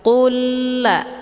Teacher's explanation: lamnya dileburkan ataupun dimasukkan ke dalam lam yang berharokah dengan cara ditekan dan masuknya secara kamil, yaitu secara sempurna tanpa tersisa bunyi lam sukunnya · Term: idgham mislain